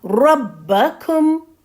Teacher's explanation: را کو ابھی آپ کو موٹا رکھنا ہے، را کے اوپر زبر ہے تو را کو آپ موٹا پڑھیں گی · کا پہ جب آپ آئیں گی تو اوٹ کو گول کر لینا ہے